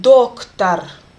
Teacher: in an unstressed position it makes the sound Ah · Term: reduced